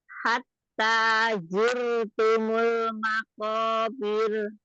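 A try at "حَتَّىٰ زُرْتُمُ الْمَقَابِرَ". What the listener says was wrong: Itu kayak masih ada sama ya-nya. Kayak ada mau nyampur ke ya. Ya itu kan di tengah lidah. Zur. Taruh aja lidahnya, ujung lidahnya di bawah. Hatta zurtumul. Hatta zurtumul. Masih ngambang lidahnya nggak pas makrosnya. Makrosnya harusnya di bawah aja dia. Santai di bawah dia. Za. Zai. Pizza. Pizza. Nah, zur.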